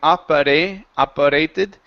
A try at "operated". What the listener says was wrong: Now, turn that R from your language into that T here.